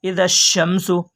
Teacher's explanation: حروف شمسی کی الف لام تعریفی کے بعد حروف شمسی کے 14 حرفوں میں سے شین ہے، اس لیے الف اور لام کو نہ پڑھیں گے بلکہ بعد والے حرف سے ملا کر پڑھیں گے۔ اس کو ادغام لام تعریفی کہتے ہیں، ٹھیک ہے، اس کو کیا کہیں گے؟